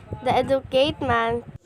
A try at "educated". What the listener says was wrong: Again, the D sound in educated was omitted.